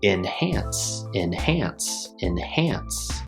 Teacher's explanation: We have two syllables, and hance. The stress is on the second syllable, so it sounds like enhance, enhance, enhance.